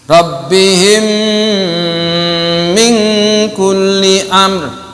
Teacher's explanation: mim mati, mim sukun bertemu dengan mim, wajib dibaca gunnah. Nah, ini hukumnya gunnah, dengung.